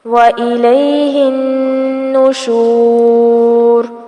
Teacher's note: نون پر تشدید ہے اس لیے یہاں پر غنہ کیا جائے گا۔